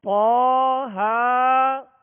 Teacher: ایک الف کی مقدار میں ہم اسے دراز کریں گے، کھینچیں گے.